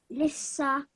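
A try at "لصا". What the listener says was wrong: Lissa. Make sure your mouth is round because it's sad, not a sin.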